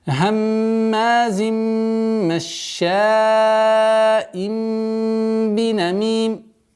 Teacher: При остановке танвин кесра переходит в сукун, и долгота в размере двухогласовок кесрой.